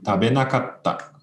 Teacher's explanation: Note the long consonant here too, double T in the Roman spelling.